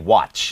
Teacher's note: ให้แน่ใจว่าลิ้นไปอยู่ที่ตัวทก่อนแล้วก็ค่อยปล่อยชออกไป